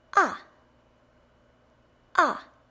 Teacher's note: And the fourth tone, ah, ah, goes all the way down.